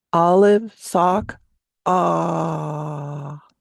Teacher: Only the tone of the voice is falling because we run out of breath.